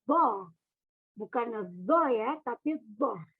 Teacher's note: dari tepi lidah kanan atau kiri yang dihimpit oleh gusi kanan atau kiri